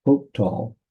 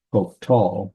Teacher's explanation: I actually emphasized the hoke, but the emphasis or the accent's actually the last. Hoktal would be the correct way of saying it.